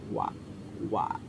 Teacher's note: Huruf wa ini makhrajnya ini yaitu dua bibir yang dimonyongkan. Wa. Nah, seperti itu.